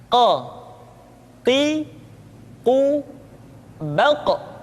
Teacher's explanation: Huruf Qaf diucapkan dengan cara menyentuhkan pangkal lidah kita dengan langit-langit bagian belakang.